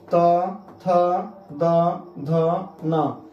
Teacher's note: सीधा जीभ आपके दांत में धक्का लगा रहा है। त थ द ध न अर्थात ये त वर्ग जो है दंत्य वर्ण है।